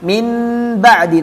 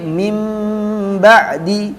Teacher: nun sukun atau tanwin itu diganti bunyi mim sukun bacanya bukan min ba'di tapi mim ba'd jadi setiap misal ketemu kaidah nunsuk sukun atau tanwin bertemu dengan ba maka pasti cara bacanya diganti bunyi mim sukun disertai dengung. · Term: iqlab